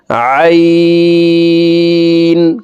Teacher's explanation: উচ্চারণ করে থাকি দেখুন হালকের মধ্যখান থেকে উচ্চারণ করব আইন কারণ আইনের মাখরাজ হালকের মধ্যখান থেকে